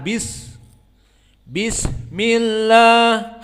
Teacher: Perhatian sinnya hams. Bis keluar, tidak ditelan.